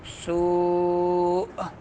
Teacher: حمزہ ساکن، تو جھٹکا دینا ہے جی